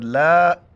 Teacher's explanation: کڑا زبر ہے، ایک الف کی مقدار اوپر کھینچیں گے